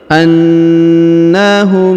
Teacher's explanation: huruf mim sukun bertemu dengan mim bertasdid, maka mimnya ini menghilang melebur ke huruf mim bertasdid. Lalu kita tahan dan kita tekan 2 sampai 3 harokat.